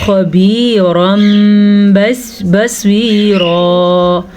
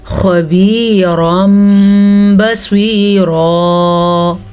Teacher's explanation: نون تنوین کے بعد با آیا تو یہاں بھی چھوٹا سا میم آ جائے گا تو یہ میم پڑھا جائے گا اور یہاں پہ غنہ بھی کیا جائے گا